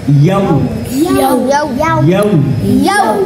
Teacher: ইয়া দিয়ে যখন ওয়াওকে ধরছি তখন কিন্তু ঠোঁটটা গোল হবে